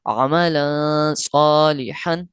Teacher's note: اب اس میں کوئی ڈفرنٹ چیز نہیں ہے، ایک فقط لام تنوین کا قاعدہ لگ رہا ہے، اور اس کے بعد ہم نے دیکھا کہ کون سا حرف ہے، حروف مصالحہ کے 15 حروفوں میں سے، حروف اخفا کے 15 حروفوں میں سے ایک حرف صاد آیا ہے، لہذا یہاں غنہ کریں گے